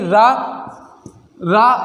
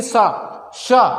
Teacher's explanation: बत्सर जो बोले जाते हैं वो मसूड़े से बोले जाते हैं